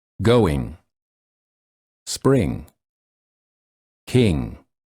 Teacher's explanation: the back of the tongue touches the soft pallet in the back back of the mouth and the air flows